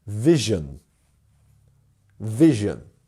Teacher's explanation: And our stressed syllable is our first one.